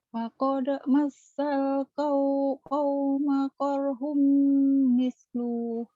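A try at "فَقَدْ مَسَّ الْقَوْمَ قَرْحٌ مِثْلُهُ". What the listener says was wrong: Salah, pendek. Faqad masal kaum korhum mislu. Pendek. Enggak ada panjang.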